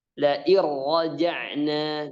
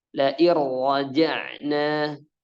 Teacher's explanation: Jadi enggak dengung, tapi dimasukkan ke ra-nya. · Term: idgham bila gunnah